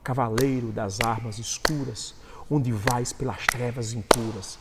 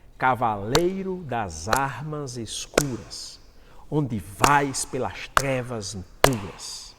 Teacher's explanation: A cada duas átonas nós vamos ter uma sílaba tônica.